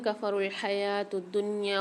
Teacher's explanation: واو کو سائلنٹ کر دیں کیونکہ اس کے اوپر کوئی حرکت نہیں ہے